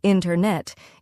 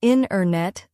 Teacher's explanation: The T sound gets softer or disappears.